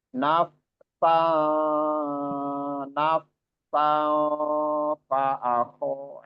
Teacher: mengalirnya suara ketika huruf fa itu disukunkan